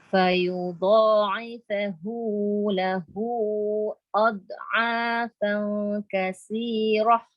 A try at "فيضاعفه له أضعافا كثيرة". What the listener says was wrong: Ada sikit lagi qalqalah. Dha tu. Dia jadi sebab lidah tu terturun kan? Dia jadi ad. Ad. Tahan dia. Tahan angin. Ad.